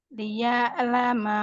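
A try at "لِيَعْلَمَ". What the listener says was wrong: La panjang, Bu.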